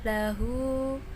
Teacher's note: Lahu mad silah qasirah sebab hanya dibaca pendek, panjangnya satu alif atau dua harokat.